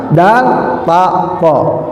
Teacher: huruf dal, ujung lidah bertemu sama gigi seri bagian atas